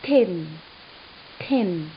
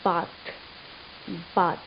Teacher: In the word bath, the sound, the final sound that you take out, that is TH, bath. The tongue tip, your tongue tip touches the upper front teeth from behind, and that is how this dental sound is produced. It is represented by the symbol as shown, or is also called ETH, eth.